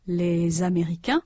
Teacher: A consonant Z is pronounced between les and américain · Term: liaison